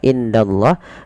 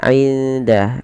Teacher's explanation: Cara membacanya menyamarkan suara nunnya kepada huruf dal. Tidak dibaca indallah, tapi dia inda. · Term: ikhfa